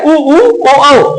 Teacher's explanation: ये आपके चार ऐसे स्वर हैं जिनको आप बोलेंगे वो वृत्ताकार है